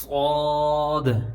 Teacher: آواز منہ بھر کے آتی ہے